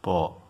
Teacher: प का उच्चारण दोनों ओठों के आपस में जुड़ने से होता है, प, अतः प का स्थान ओष्ठ है।